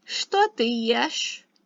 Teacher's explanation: And even though it's written что, it's pronounced что, right? So the ch becomes an sh sound.